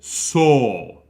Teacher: it's a very open mouth o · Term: open o